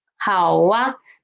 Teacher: Because for these 3 finals, 呜, ow, o, these 3 finals, we all end up with the this shape, right? Our lips are ended with ow, o, or ends up with oo. So when we want to pronounce a after this, we will just naturally pronounce wa